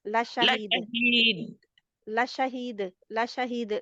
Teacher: ल शहीद इसको शक्ति ना दे दाल के ऊपर शक्ति नहीं दाल ना मोटा हर्फ है ना शक्ति वाला है ये बारीक है